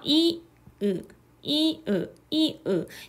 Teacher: 이는 약간 앞쪽, 으는 상대적으로 뒤쪽이죠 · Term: 전설모음과 후설모음